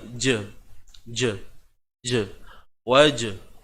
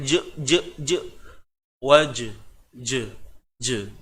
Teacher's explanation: Jangan je. Jangan kita menekan-nekan dia sampai bunyi hamzah pula kat ujung tu. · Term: qalqalah sughra